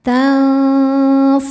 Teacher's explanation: Cara bacanya nun disamarkan ke fa disertai dengungan. Dengung dan samarnya sama besar karena fa makhrajnya tidak terlalu dekat dan tidak terlalu jauh dari nun. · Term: ikhfa hakiki ausat